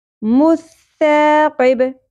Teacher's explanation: ثا نرمی سے ادا ہوگی سیٹی اور شدت کا ایلیمنٹ نہیں ہوگا اور زبر کے ساتھ الف حرف مدہ ہے ایک الف کے